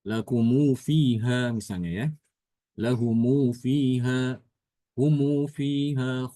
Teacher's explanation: Apabila huruf setelah mim jamak berharokat, maka Imam Ibnu Katsir bacanya adalah dengan mensilahkan huruf mim tersebut.